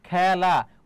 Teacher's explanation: খেলা খ এর উচ্চারণটা কি হয়ে যাচ্ছে বলতো খ্যা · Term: বিবৃত